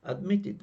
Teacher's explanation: A final sound T, ed is pronounced like id.